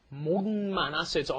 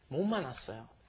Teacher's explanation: Another consonant, it's not pronounced, it's just 못 만났어요. It's kind of like an N sound, isn't it, when it comes before an M.